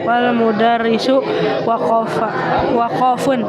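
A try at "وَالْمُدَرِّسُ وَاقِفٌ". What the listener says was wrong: Salah. Salah, enggak ada waqaf. Wal mudarrisu waqifun.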